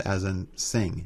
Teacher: It's the sing sound as in sing, the N sound as in sing, that kind of ning sound, kind of a guttural N.